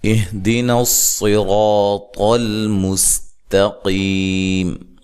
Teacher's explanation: صاد کو خوب موٹا پڑھنا ہے، را کو بھی موٹا کرنا ہے، طا کو بھی موٹا کرنا ہے